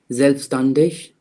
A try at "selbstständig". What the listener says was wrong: Not standish.